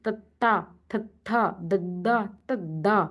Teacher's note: ਦੰਦਾਂ ਦੇ ਵਿੱਚ ਜੀਭ ਨੱਪ ਲੈਂਦੀ ਦੰਦਾਂ ਨੂੰ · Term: ਦੰਤੀ